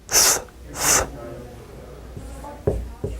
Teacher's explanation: That is the voiceless dental or interdental fricative